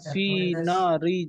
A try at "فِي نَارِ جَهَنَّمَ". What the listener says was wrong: না, ফি না দুটো সব টান আছে, ফাইয়াজের ইয়ায় মাত্রা আর নুন আলিফে মাত্রা। নারি জাহান্নাম, না টান দিতে হবে।